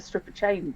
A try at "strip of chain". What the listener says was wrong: You could perhaps be a little bit more careful with your pronunciation there. He has a strip of chain and not a stripper chain, which I suspect would be a different thing.